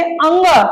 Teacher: नासिका, नासिका मतलब नाक से आवाज, नाक से मतलब बोला जाए। जैसे अंग, नाक से थोड़ा सा निकल रही है आवाज